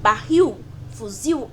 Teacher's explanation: L Ou seja é barril e fuzil oxítona porque a última última sílaba barril fuzil é que é mais forte